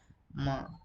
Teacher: Only two lips are involved so we call it as bilabial sound